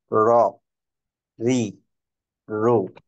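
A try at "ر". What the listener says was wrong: একটু র আওয়াজ আসতে হবে, হ্যাঁ। ইজ ওয়ার, এরকম র।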